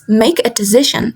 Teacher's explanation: in collocations and compounds, the stress falls on the word. For example, in collocations, make a decision, the stress falls on decision